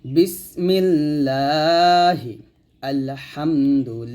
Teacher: যদি জের আসে আল্লাহ শব্দ লাম জের আসে তাহলে সেক্ষেত্রে লা বলতে হবে এটা পাতলা হবে